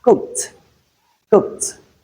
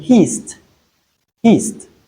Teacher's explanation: when we have the ed coming after a voiceless sound, that ed is realized as t, which is the voiceless form of d